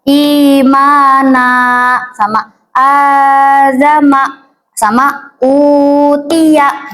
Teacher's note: panjangnya itu cuman 1 alif aja teman-teman, nggak usah lama-lama atau 2 harokat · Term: mad badal